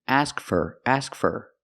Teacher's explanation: for is not stressed in a sentence